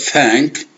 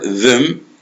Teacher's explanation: pronunciation in English the letters th can have different pronunciation and the word thank the th sound does not have a vibration. طبعا هنا ثا يعني يعتبر ما فيه اهتزاز.